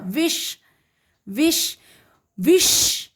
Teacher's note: तो मूर्धन्य श जब बोलेंगे तो जीवा, आपकी जो जीभ है वो मूर्धा को स्पर्श करती है, टच करती है, इसीलिए ये हो गया मूर्धन्य श।